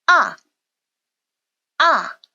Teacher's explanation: 가장 높은 음에서 가장 낮은 음으로 뚝 떨어지는음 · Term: 4성